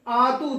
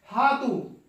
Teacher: یا، اصل میں یہ لفظ آتو تھا، یہ جو ہے آتو، حمزہ جو ہے حمزہ اور ہا یہ قریب المخرج ہے، ایک ہی جگہ سے اقصی حلق سے نکلتے ہیں ، اس لیے حمزہ کو تا میں بدل دیا گیا، ہاتو،